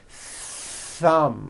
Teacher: You must stretch out the TH sound and hear the air friction.